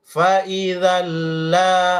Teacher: Idgham bila guna seperti ini cepat dan tidak dengung. Kalau idgham biguna ya jelas dengung, ya, dan ditahan kasih lama.